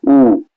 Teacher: जो उ स्वर है, ठीक है, उसका उच्चारण स्थान क्या है, तो ओष्ठ है